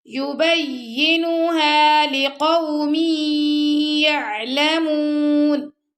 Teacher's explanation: اگر آپ پڑھیں گے یبینوہا تو آپ کا نون لمبا ہو جائے گا تو یہ رانگ ہے